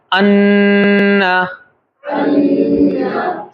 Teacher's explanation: پھر نون سے نکالے ان، زبان اپنی جگہ پر ہے، نوک زبان اوپر کے تالو سے مل رہی ہے، لیکن گنہ ناک سے ادا ہو رہا ہے